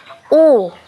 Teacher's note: suara dhomah juga merupakan vokal tinggi tapi yang meninggi adalah belakang lidah dan kedua bibir membentuk semi bundar